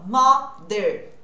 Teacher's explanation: esse TH também é aquele voiced, que é aquele que eu vou usar as cordas vocais. Para eu começar aprendendo a fazer esse som, eu primeiro preciso olhar num espelho ou na câmera do celular se a minha língua está entre os dentes.